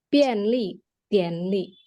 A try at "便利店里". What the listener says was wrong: 店ada 4 juga. Tiannya nada 4 ya. Jadi dia ketiga huruf itu nada 4, terakhir baru nada 5.